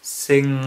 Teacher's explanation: Well, the tongue is right up against the velum. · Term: nasal consonant